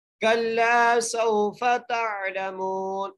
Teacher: मीम को एक अलिफ की मिक़दार खींच के पढ़ेंगे और नून को साकिन कर देंगे वक़फ़ की वजह से